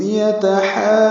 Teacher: یتحاجون میں ہا وسط الگ سے نکالتے ہوئے لمبا کریں گے کیونکہ اس میں مد لازم کلمی مثقل ہے. ہا الف مدہ ہے اور جیم پر تشدید آنے کی وجہ سے مد آئی ہے.